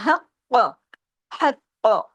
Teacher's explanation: قاف کو ہیوی بھی کیجئے، قاف کو ڈبل بھی کیجئے